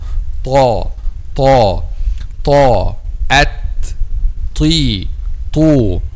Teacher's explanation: letter ta is a heavy letter because the back of the tongue is raised when pronounced letter ta. Ta, at, ti, tu.